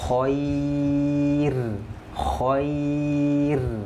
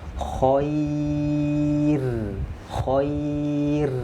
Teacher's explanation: Ada ya sukun. Maka dibacanya tipis.